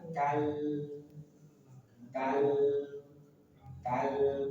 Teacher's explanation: lam punya sifat bainiah sedikit alirkan.